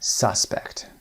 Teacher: استرس در قسمت اول suspect. یو هم داریم اما صدای آ